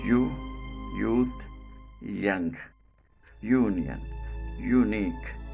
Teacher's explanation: hard palate manner of articulation approximate or frictionless continuant quality voiced the sound is called palatal voiced approximant · Place of articulation: hard palate. The front or central part of the tongue almost touches the hard palate. Manner of articulation: approximant or frictionless continuant.